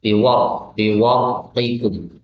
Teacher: ketika ra'nya disukun karena didahului dengan fathah, maka ra'nya tafkhim atau tebal